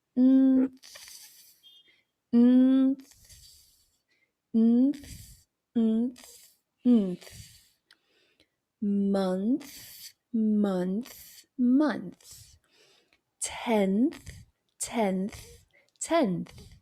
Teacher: língua para fora já para o N, e aí solta o ar para o TH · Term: transição